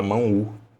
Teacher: Quando você vai grafar a palavra mão, você não fala mão O. Você fala mão U. Essa letra, na hora de você fazer a grafia dela, ela vai ficar com som de U, tá? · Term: semivogal